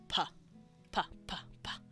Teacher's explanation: you're using both lips to p p p make a p noise · makes a m sound and you can do that again here using your two lips if you do a stop like you're making an actual PP noise